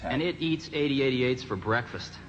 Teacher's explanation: There's a really subtle kind of drawn-out S sound that Jobs had.